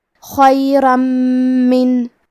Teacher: آخری میں را پہ تنوین زبر ہے، پھر حرف المیم ہے. میم حروف الادغام بغنہ میں سے ہے تو ہمیں یہ حکم کو غنہ اور تشدید کے ساتھ ادا کرنا ہے